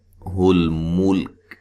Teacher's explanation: لام ساکن ہے، ہلانا نہیں ہے، وقف کی صورت میں کاف کو بھی ساکن کر دیں گے